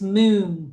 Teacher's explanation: The first sound is m. That's a continuous sound.